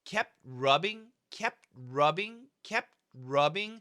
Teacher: we hear not only the P stopping, but that T is also stopping.